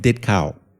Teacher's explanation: There's like a slight unvoiced sound at the end.